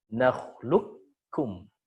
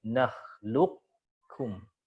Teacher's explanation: Di situ ada yang menyebutkan idghamnya kamil, ada yang menyebutkan boleh juga naqis. Kalau kamil berarti langsung masuk ke huruf kafnya. Nakhluqkum, langsung ke kaf. Tapi kalau nakis, ada tebalnya dulu.